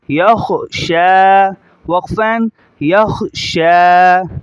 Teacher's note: پیچھے بتا چکا ہوں کہ اینڈ کے لفظ پر اگر کھڑا زبر آ جائے تو جیسے ہجا میں پڑھا جا رہا ہے، رواں میں بھی ایسا ہی پڑھا جائے گا، مختلف نہیں ہوگا۔ یا کو خا کے ساتھ ملائیں گے اور خا کو موٹا کریں گے کیونکہ ہرا ہے، اور یا کو چھوڑ دیں گے۔